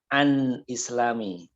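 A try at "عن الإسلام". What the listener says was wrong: Ya, ini dibacanya anil islami. Asalnya an Ya, ketemu dua sukun jadi dibaca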